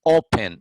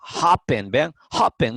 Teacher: la forma más fuerte de su pronunciación está en la primera sílaba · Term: acentuación